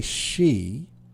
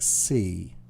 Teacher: when you say she, it sounds a bit more like C. So there's not the sh sound in it.